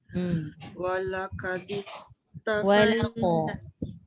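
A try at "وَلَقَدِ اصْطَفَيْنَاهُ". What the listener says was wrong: Walaqad istafaina tebal. Dia jangan wala wala qaf baru tebal. Walaqad istafaina jangan tafai. Walaqad istafaina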